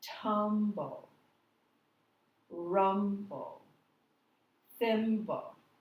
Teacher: the first syllable is said a little longer, a little higher